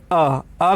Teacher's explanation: अ का उच्चारण करते समय ही जीभ का जो मध्य वाला हिस्सा है वो क्रियाशील रहता है और बाकी जो है ज़्यादा क्रियाशील नहीं रहता है। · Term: मध्य स्वर